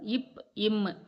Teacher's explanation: மேல் இதழும் கீழ் இதழும் பொருந்துவதால் பிறக்கும் எழுத்துக்கள் இப், இம். நாக்கின் அடிப்பகுதி மேல்வாயின் அடிப்பகுதியை பொருந்துவதால் பிறக்கும் எழுத்துக்கள் இ.